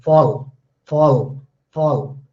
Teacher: when the la comes in the final position, then it is dark la.